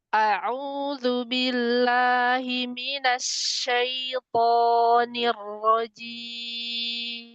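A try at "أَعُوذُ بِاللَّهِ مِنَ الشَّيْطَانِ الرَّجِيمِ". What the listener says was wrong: Umi tadi billah turunin lagi ya. Kemudian nah ketika masuk ke shinnya jangan mampir ke sin ya. Langsung dia banyakin tekanannya dulu di tengah baru banyakin udara ngalir.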